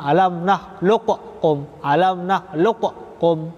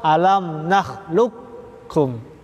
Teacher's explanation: Qafnya diidghamkan, dileburkan kepada huruf kaf.